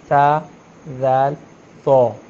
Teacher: ज़बान की नोक जब ऊपर वाले दांतों के किनारे से लगती है तो तीन हरूफ अदा होते हैं, सा ज़ैल तो वो जी।